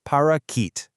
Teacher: That middle syllable is completely unstressed, so your tongue just relaxes right in the middle of your mouth and outputs this soft neutral uh sound